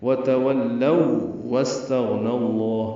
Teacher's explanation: تو ادغام کر سکتے ہیں یا کرتے ہیں۔ وتولوا واستغنى اللہ، ملا کر پڑھنے کی صورت میں ادغام ہے اور ادغام شفوی ہے، دونوں واو ہیں اس لیے ادغام مثلین بھی ہے